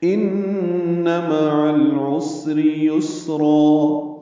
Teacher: ان میں غنہ ہے، مع العین وسط حلق سے، لام ساکن پہ اظہار، عسر میں سین ساکن پہ ہمز، را باریک